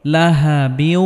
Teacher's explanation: বা ওয়াও 2 জের বিউ, লাহা বিউ। তানবিনের পরে ইদগামে বা গুন্নার হরফ ওয়াও আসার কারণে এখানে গুন্নাহ সহ ওয়াওকে মিলিয়ে পড়তে হবে